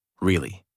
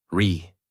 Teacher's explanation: voice rises and falls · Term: Natural American tone